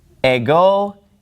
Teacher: the word ego, it gets the accent on the second syllable